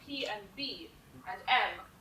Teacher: P and B and M are your bilabial, your two-lip sounds. So when you say P and B and M, they're all coming off your two lips.